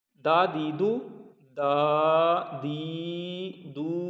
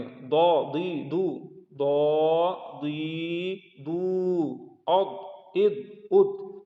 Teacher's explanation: दाल को बारीक पढ़ते हैं और दौद को मोटा पढ़ते हैं